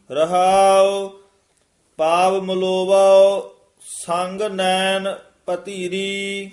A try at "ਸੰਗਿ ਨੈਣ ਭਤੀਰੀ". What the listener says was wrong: ਭਤੀਰੀ ਧੱਦਾ ਨਹੀਂ ਵਿੱਚ ਲਾ ਜਾਣਾ ਤੱਤੇ ਦੀ ਜਗ੍ਹਾ, ਯਾਨੀ ਮਿਹਨਤ ਨਾਲ ਹੀ ਸ਼ੁੱਧ ਕਰਨਾ। ਭਾਤੀਰੀ, ਭਾਤੀਰੀ ਇਕੱਠਾ, ਪਤੀਰੀ ਨਹੀਂ ਕਹਿਣਾ ਹੈ।